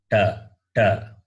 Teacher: That becomes somewhat dental. It is not dental. It is cerebral. That is, the tongue should touch the roof of your mouth.